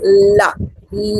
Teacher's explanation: We just touch the tip of the tongue to the alveolar ridge, and then we release la. La, the air passes through the sides of the tongue. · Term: lateral sound